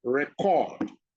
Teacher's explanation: When you pronounce it, record, that is the noun. And the stress is on R-E, the first syllable.